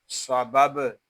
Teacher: با ساکن ہے، اس میں کلکلہ خوب ظاہر کریں گے